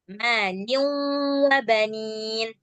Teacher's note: Liu karena ada waw setelah tanwin. Jadi dia hilang suara tanwinnya, yang tinggal hanya suara wawnya.